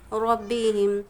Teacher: रा पर ज़बर है इसलिए रा पूर पढ़ी जाएगी।